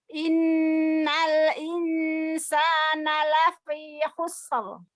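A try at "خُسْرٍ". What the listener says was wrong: Huruf sonnya jangan ditasdidkan Ibu. Khusr biasa aja. Jangan khusr. Pengucapan huruf fa, ya. Huruf fa jangan tidak dibaca lafi lagi, tapi keluarkan udara.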